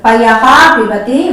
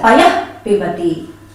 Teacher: We don't pronounce full Visarga like Payaha Pibati, we say it as Payah Pibati, like that. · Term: half Visarga